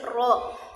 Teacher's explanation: Ro di sini keluar dari ujung lidah, lebih ke dalam sedikit daripada huruf nun